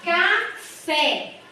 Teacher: a última sílaba foi a mais forte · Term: oxítona